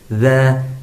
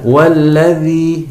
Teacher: pangkal lidah sampai ke tengah lidah itu tidak naik ke langit-langit sehingga tidak menimbulkan suara ketebalan dia tipis saja